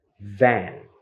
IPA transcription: væn